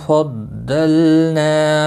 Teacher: نا الف مدہ ہے ایک الف کے برابر کھینچ کر پڑھیں گے